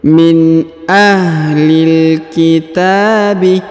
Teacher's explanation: Huruf ta dipanjangkan 2 harokat karena di atasnya terdapat alif kecil.